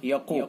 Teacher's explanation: قاف حروف مستعلیہ میں سے لہذا قاف کو پر پڑھیں گے، نون حرف مشدد لہذا نون کے اندر غنہ ہوگا، حرف غنہ ہوگا، یہ والا۔